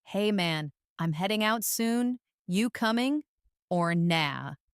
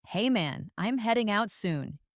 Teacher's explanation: the dropped G in heading and coming, and the use of casual phrases.